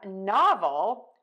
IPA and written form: ˈnɑvəl (novel)